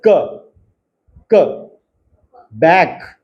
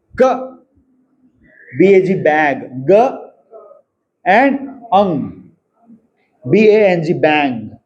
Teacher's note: The बैक of the tongue is the active articulator एंड the soft palate is the passive articulator. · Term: व्हीलर साउंड्स